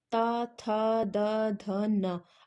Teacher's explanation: इसमें हमारी जो जीभ है वो दांत से टकरा रही है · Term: दंतीय व्यंजन